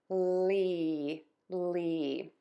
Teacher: e is that nice high flat tongue vowel is long and you are smiling